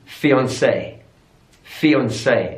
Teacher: stress on the final syllable